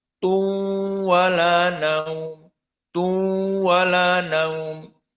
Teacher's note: Idgham tanwin kepada waw, tu, dan makhraj dari khaisum beserta dua harokat.